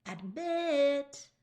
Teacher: Do you hear how mit's the louder, longer side? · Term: stress side